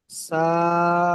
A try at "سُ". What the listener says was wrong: সা একটা প্রেসার হয়ে যাচ্ছে, জিভটা উপরে দাঁতের সাথে প্রেসার লাগছে। এটা জিভের আগাটা উপরে দাঁতের আগার সাথে হালকা লাগবে।